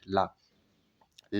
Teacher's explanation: बिल्कुल जिह्वा आपके दंत में चिपकी होती, जैसे ला बोलते हैं, चिपक कर वह एकदम से झटके से बाहर आती है और ला का उच्चारण आपके मुख से निकलता है।